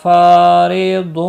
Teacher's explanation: پھا الف مدہ ہے، ایک الف کے برابر کھینچ کر پڑھیں گے، را زیر کی وجہ سے باریک ہوگا